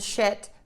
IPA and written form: ʃɪt (shit)